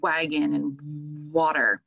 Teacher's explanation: the lips category and the back of the throat category and the sound starts in the back and you're really using your lips to help articulate that sound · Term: glides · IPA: /w/